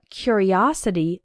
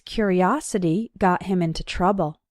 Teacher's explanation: the first syllable is strong he was a curious boy and in the noun form curiosity the third syllable is strong